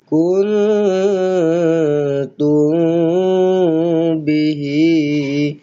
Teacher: sama juga mim kosong bertemu dengan ba ikhfa syafawi · Nun kosong bertemu dengan ta ikhfa hakiki. Dengung dua harakat.